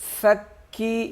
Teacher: یہ فا کاف کے ساتھ سختی سے ملے گا، اور یا کو 1 الف کے برابر کھینچیں گے